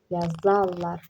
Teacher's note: Vurğu fe'l kimi düşünəndə vurğu əvvələ düşür, lardan əvvələ. Digərində isə sona düşür.